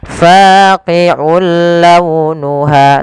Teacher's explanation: Kemudian berlafal launuha, ada hukum tajwid berupa memasukkan suara tanwinnya kepada huruf lam yang kita kenal dengan idgham. Nah, tapi idgham di sini tidak boleh disertai dengan gunnah, maka kita namakan dengan idgham bila gunnah.